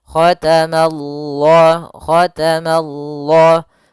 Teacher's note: Ma-nya tipis, Allah-nya tebal. Nah, maka dia baca dengan lam yang tebal